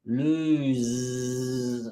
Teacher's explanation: Lose, it's longer. And it's like a zzz.